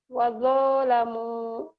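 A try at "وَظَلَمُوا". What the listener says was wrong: Wazo, jangan do ya. Kalau do, so titik. Ini to titik itu ZHO, zo, tapi ngucapinnya jangan di gigi, jangan di depan. Tapi di dalam, zo. Wazalamu gitu ya.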